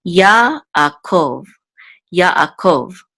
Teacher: So the accent is on the last syllable